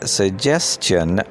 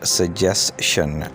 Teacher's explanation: the second syllable of this word starts with a cha sound